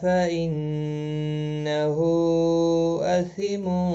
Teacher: مد منفصل ہے، تین الف کے برابر کھینچ کر پڑھا جائے گا